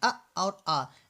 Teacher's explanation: तो हम जो छोटा आ जिसको बोलते हैं और बड़ा आ बोलते हैं, ये दोनों हमारे कंठ से निकलते हैं